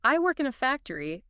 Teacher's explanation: going up at the end turns it into a question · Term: intonation